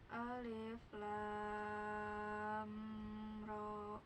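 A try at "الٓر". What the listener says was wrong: Ya, amnya jangan ditahan, nah itu mah ada mim ya. Alif lam ra. Ya, amnya jangan ditahan ya, enggak lama.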